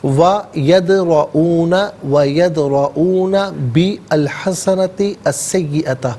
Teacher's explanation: وَيَدْرَؤُونَ بِالْحَسَنَةِ السَّيِّئَةِ، باقی نیچے زیر سے الحسنتی کی لام ساکن کے ساتھ ملائیں گے، حسنتی کی تا کے نیچے زیر سے السیئۃ کے سین کے ساتھ ملائیں گے، درمیان میں سے الف یعنی حمزہ کو حذف کیا جائے گا